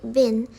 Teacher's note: For example, in the word bin, the vowel a is normally minus nasal. However, because of the following n, the plus nasal feature spreads to the vowel. As a result, the vowel becomes nasalized.